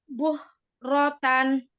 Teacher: Buk rotan. Diem dulu, ditempelin dulu di makrot huruf kafnya, baru nafas yang dialirkan.